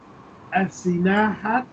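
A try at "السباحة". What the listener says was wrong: This is Ba. As-Sibaha.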